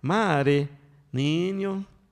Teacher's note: Siempre hay una consonante y a veces es imperceptible porque es una, a veces muy leve, decimos mare, pero ahí debe haber una consonante, ¿no? Y generalmente también alargamos la primera sílaba